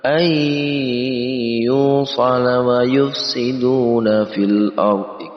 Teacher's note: Idgham artinya menggabungkan atau mencampurkan ataupun memasukkan nun mati ke dalam huruf ya, lalu digunnah, didengungkan. Ya-nya kita dengungkan. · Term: idgham bihunnah